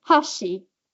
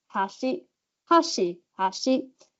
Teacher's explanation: Chopsticks has a fall Hashi and then Bridge has a rise Hashi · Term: pitch accent